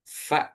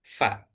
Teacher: Jadi, gigi atas ketemu dengan bibir bawah. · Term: huruf fa